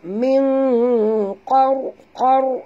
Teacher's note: Ra bila dia mati sahabat ya. Huruf sebelumnya baris di atas, kena baca tebal. Min qar, qar, naikkan lidah ke atas.